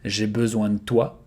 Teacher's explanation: De, here you can devocalize the E.